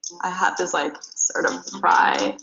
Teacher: her voice got kind of low and scratchy that's called vocal fry